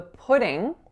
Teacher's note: And then the last thing I want you to know is that the pudding, just like in the previous example, you can say this with an sound, so a velar nasal, in which you use the back of your tongue